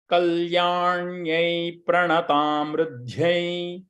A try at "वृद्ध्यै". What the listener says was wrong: Pranatam Vridhyai. There is no emphasis on the, it is a Ritvam. It is not the Ru, it is a R. Kalyanyai Pranatam Vridhyai.